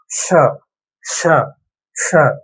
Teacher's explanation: நாக்கோட முதல் பகுதி மேலத்தோட நடுப்பகுதியை தொழும்.